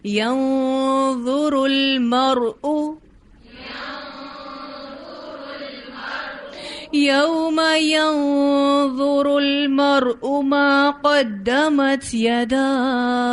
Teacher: ينظر کا اخفا بھی موٹا ہے کیونکہ آگے ضو آ رہا ہے اور اس کا را بھی پر ہے اور مرء کا را بھی پر ہے.